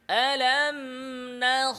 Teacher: খ আওয়াজ জারি, বাতাস জারি, আওয়াজের গতি উপরে, আলাম নাখ, বলেন আবার মোটা করে, আলাম কি আলাম, হামজা ইস্তিফাল আ আ আ লা, আলাম নাখ, নাখ, আবার আবার আবার মোটা করে, মোটা করে, আওয়াজ উপরে, জিহ্বার গোড়া উপরে, বাতাস জারি, আওয়াজ পরিপূর্ণ জারি, বলতে থাকেন।